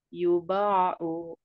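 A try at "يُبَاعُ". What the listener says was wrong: hati-hati u-nya jangan sampai Kepanjangan Bu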